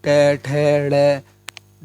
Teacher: मूर्धन्य ट वर्ग का उच्चारण स्थान जो है मूर्धन्य है